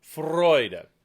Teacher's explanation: Make sure you get a good rolled R and the F before the beat.